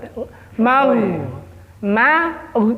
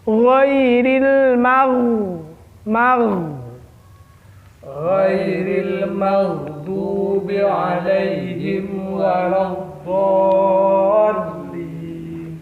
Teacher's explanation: Ketika saya nyampai ke huruf ghin itu tebal karena huruf tafkhim.